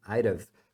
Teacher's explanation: Então, na verdade, I'd have o have aqui acaba sumindo.